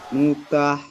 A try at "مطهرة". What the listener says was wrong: মুতা নয়, মুতহ, ত হাজাবার ত।